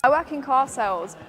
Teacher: In received pronunciation and accents common in the south of England, the R is typically dropped at the end of the word or right before a consonant